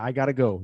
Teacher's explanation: we take have got to and it becomes I've got to, which then is reduced to I gotta